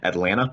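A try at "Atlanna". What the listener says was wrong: Atlanta. So Atlanta. It's Atlanta without the second the T.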